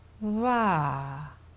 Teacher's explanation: please notice the airflow is not halted and the consonant is pronounced smoothly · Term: soft contacts